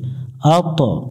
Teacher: এখানে ত অক্ষরের উপর সুকুন আছে কলকলা করতে হবে একটু প্রতিধ্বনি সৃষ্টি করতে হবে যেখানে কলকলা করতে হবে ওখানে এরকম একটা মিনার চিহ্ন থাকবে আত্ত